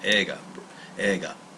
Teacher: if you listen to it it has kind of like a the G has more of an NG sound to it